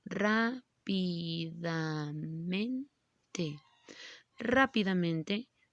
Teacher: rápidamente lleva el acento ortográfico en la primera sílaba y entonces decimos que es su sílaba tónica